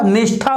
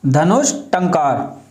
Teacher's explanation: यहां विसर्ग से पहले ई है और विसर्ग के बाद में ठा है तो विसर्ग का परिवर्तन मूर्धा वाले शा में हो जाएगा